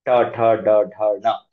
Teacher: ನಾವು ಬಳಸುವ ಜಾಗ ಬಾಯಿನಲ್ಲಿ ಮೂರ್ಧ ಹಾರ್ಡ್ ಪ್ಯಾಲೆಟ್ ಅಂತಾರೆ ಅಬ್ಸರ್ವ್ ಮಾಡಿದ್ರೆ ಗೊತ್ತಾಗುತ್ತೆ ನಾಲಿಗೆ ಹೋಗಿ ಮೇಲೆ ಟಚ್ ಆಗ್ತಾ ಇರುತ್ತೆ ಟಿಪ್ ಆಫ್ ದ ಟಂಗ್